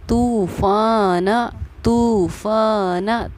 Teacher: ता वाव पेश तू को एक अलिफ़ के मक़दार के बराबर हम खींच कर पढ़ेंगे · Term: हुरूफ मद्दा